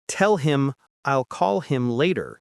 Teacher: The H in him drops out completely. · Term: connected speech